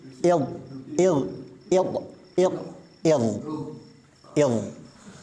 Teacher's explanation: masih diangkat pangkal lidahnya Tetapi dia ringan karena kondisinya sebelumnya didahului kasrah